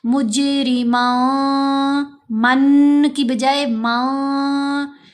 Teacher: مجرمان، مج، جیم پر کلکلا، را کو باریک پڑھیں گے، مجرمان، من میں جو نون ہے اس کو ہم نے ناک میں چھپا کر پڑھنا ہے کیونکہ آگے فا آ رہا ہے ، تنوین کے بعد فا ہے، فا حروف احفا میں سے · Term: غنہ خفیف